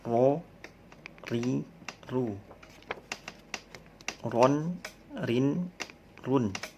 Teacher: Sedikit bergetar ya. Ada sifat takrir, bergetar.